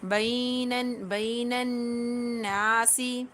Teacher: نون زبر نن، نون الف زبر نا، درمیان میں لام طریف حذف کرتے ہوئے، کیونکہ نون حروف شمسیہ میں سے ہے اور حروف شمسیہ سے پہلے الف اور لام نہیں پڑھا جاتا۔ یہاں پر نون کو نون مشدد کے ساتھ ملاتے ہوئے نون کے اندر غنہ کریں گے اور نون کو ایک الف کی مقدار کھینچتے ہوئے پڑھیں گے